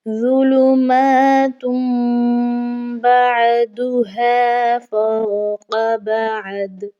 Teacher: اقلاب کا جو معنی ہے وہ ہے بدلنا، یعنی کہ تنوین کی علامت کو میم سے بدل کر پڑھا جاتا ہے اور اس کے بعد با کو بھی پڑھا جاتا ہے